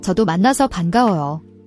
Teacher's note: The ban is a soft B sound, not a hard P.